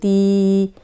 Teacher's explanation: تی باریک حرف ہے اور اس کو تھوڑا سا لمبا کریں گے، تی، کیونکہ جزم والی یا ہے، پیچھے زیر ہے، ویسے تو زیر ہو تا زیر تی، لیکن یہ جزم آ گئی ہے تو ہم اس کو تھوڑا سا لمبا کریں گے، تی نون دو پیش نون، تی نون۔